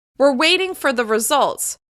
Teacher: the contraction is reduced while we're stressing the key words of the sentence